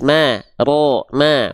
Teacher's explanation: jadi rnya tebal mimnya tipis